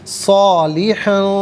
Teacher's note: صالحاً میں ہا پر دو زبر کی تنوین ہے، اس کے بعد فا حرف اخفا آ رہا ہے، تو یہاں پر دو زبر کی تنوین کو اخفا کے ساتھ پڑھا جائے گا۔